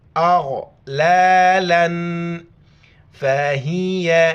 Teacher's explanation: تنوین پر بھی ناک میں آواز چھپائیں گے، اغلالا فہی الى حمزہ زیر اے، لام لام زبر لل، بیچ میں یا اور الف کو نہیں پڑھیں گے.